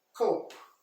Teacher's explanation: Mas aqui é cope, cope no alto, cope. Quase o P mudo e não se fala no E.